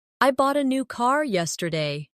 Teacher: The stressed words are bought, new, and car. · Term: sentence stress